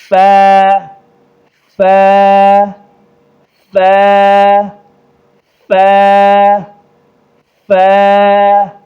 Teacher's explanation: جو اوپر کے جو دو دانت ہیں ان کو نیچے والے ہونٹ پر لگائیں گے